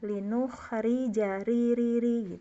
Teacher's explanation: seperti mengucapkan pengucapan R dalam bahasa Indonesia tapi tentunya getarannya hanya boleh satu kali putaran · Dulu saya waktu setoran sanad juga banyak dikoreksi ya oleh Ustadz, karena saya bacanya ri, padahal harusnya tipis. Jadi seperti pengucapan R dalam bahasa Indonesia, tapi tentunya getarannya hanya boleh 1 kali getaran ya. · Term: rak tipis, ro tipis